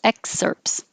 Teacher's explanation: we don't really make the t the pts excerpts so just skip the t excerpts and these